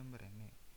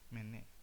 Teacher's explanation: Reduksi vokal atau penghilangan vokal tengah marene jadi mane.